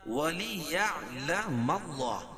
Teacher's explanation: اللہ کے لام سے پہلے زبر ہے تو اللہ کا لام پر پڑا جائے گا